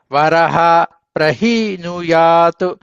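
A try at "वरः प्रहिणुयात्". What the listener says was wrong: దీర్ఘం లేదండి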